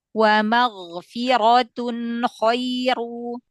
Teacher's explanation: tebalkan ra fathah, ra dhamma, tebalkan lagi